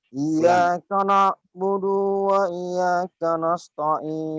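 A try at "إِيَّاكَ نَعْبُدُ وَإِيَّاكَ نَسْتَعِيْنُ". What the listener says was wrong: Iya-nya itu tasjid, Bang. Iyyaka na'budu wa iya. Kalau tasjid itu iya agak ditekan gitu dulu ya. Jangan wa iya. Kalau wa iya itu berarti nggak ditasjidkan di situ, Bang.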